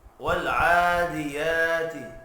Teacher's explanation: والعادیات عین اور یا کے اوپر کھڑی زبر ہے، ایک ایک الف کے برابر کھینچ کر پڑھیں گے